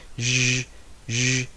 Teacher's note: So the place of articulation is palatal alveolar, and the manner of articulation is fricative.